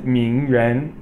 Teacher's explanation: Ming is second tone or Rising tone Ren is second tone